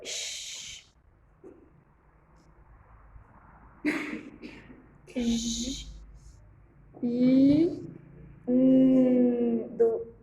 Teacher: Todas essas são palatais. A língua encosta no céu da boca